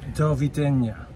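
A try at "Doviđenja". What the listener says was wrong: No, the J, if you see on the screen, there's a J. The J is pronounced as a Y. Dovidenia. Dovidenia. Dovidenia. Dovidenia. Dovidenia. So from Croatia, it's Dovidenia.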